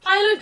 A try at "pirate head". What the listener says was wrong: pronouncing it as pilot, so what are you gonna do? Fly?